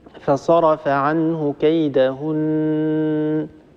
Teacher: النون مخرجها من طرف اللسان مع ما يحاذيه من الحنك الأعلى، فيظل طرف اللسان على الحنك الأعلى ونخرج غنة من الخيشوم. لما تنتهي من هذه الغنة الطويلة طبعا طرف اللسان سيجافي الحنك الأعلى، سيبتعد عن، لأننا سكتنا، ثم سنبتدئ بالكلمة التي بعدها. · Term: النون المشددة